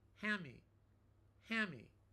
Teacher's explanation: Whenever you have A-N-D and then a consonant, instead of hand me, we say ham me.